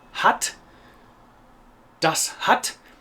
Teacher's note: short but open A sounds are very difficult for Americans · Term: short German A